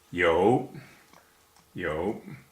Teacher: In Pinyin it's spelt Y-O-U, and it's pronounced like the first half of yoga. The tone is third, which means it goes down and then up.